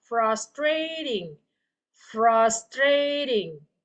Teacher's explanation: And then check on ENAS number 10, another word here, ended with a TING. Okay, so huruf T-nya dibaca seperti huruf D dalam bahasa Indonesia.